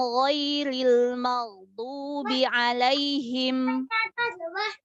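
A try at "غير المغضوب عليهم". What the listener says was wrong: Nah, maghdu. Ma tipiskan.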